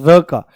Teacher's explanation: जैसे ही र बोलते हैं तो जीभ का जो अगला हिस्सा है, टिप जो है, वो ऊपर वाले मसूड़े में जाकर के लुढ़कती हुई टक से लगती है और फिर नीचे आ जाती है। · जब हम र का उच्चारण करते हैं, र का, तो हमारी जीभ जो है वो लुढ़क करके जाती है। आप महसूस करना बिल्कुल। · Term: लुंठित व्यंजन